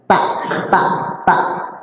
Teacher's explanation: Lidah kita ujung kita ada di gigi seri bagian atas. Sempurna gigi seri itu ditempelin dengan dengan lidah kita bagian ujung. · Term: huruf lisan